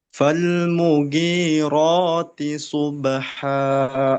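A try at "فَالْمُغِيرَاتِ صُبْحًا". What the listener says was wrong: Oke, huruf gha dia bukan huruf G tapi huruf ghain, gha. Makanya dia ada di pangkal di ujung di bagian atas daripada tenggorokan. Falmughira bukan mugi, beda ya. Falmughirati subha.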